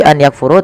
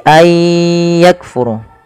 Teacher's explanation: memasukkan bunyi Nun kepada huruf setelahnya kemudian disertai dengan gunah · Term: Idgham, idgham bi gunnah